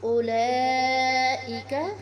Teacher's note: یہاں دیکھیں لام کے اوپر کھڑی زبر ہے، اسے ہم ایک الف کی مقدار لمبا کر کے پڑھیں گے، اور یہ مد کی علامت ہے، اسے مد متصل کہتے ہیں۔